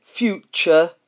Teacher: is actually pronounced future with a ch in the place of the t, and it's more a schwa sound